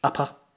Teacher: upper, the R is at the end of the word, so it's not pronounced. If it was an American saying that word, they would say upper, upper.